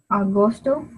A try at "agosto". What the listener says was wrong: Muy bien.